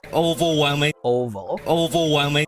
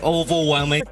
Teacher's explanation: on is the word overwhelming the problem with it is that the word over in the front of the word is not stressed